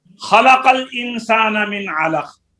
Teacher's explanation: خا میں دوسرے درجے کی تفخیم ہے، قاف میں بھی دوسرے درجے کی تفخیم ہے کیونکہ بعد میں الف نہیں ہے